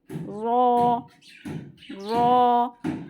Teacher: रॉ, और बहुत हल्का सा टच होता है। रॉ टिप जो होती है ना, वो टच होती है बस, मसूड़े जो होते हैं ऊपर, वहाँ जाके। रॉ रॉ, मोटा करेंगे इसे, पुर पढ़ेंगे। · रॉ, और इसका मखरज कहाँ से है? ज़बान की बिल्कुल आगे का टिप, ऊपर की जो दांत हैं उसमें जाके रूट्स में टच होता है। रॉ, और बहुत हल्का सा टच होता है। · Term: हुरूफे तरफिया